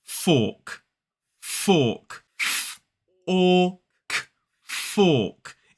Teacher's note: So in the middle of that word, notice it has the or vowel sound. It is a long vowel sound.